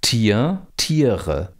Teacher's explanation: dieses R hier ist nur in dem Wort Tiere tatsächlich phonetisch ein R hier haben wir eine Vokalisierung dieses RS das gleiche in Kor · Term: R-Vokalisierung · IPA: [ti͡ɐ] – [ti͡əʁə]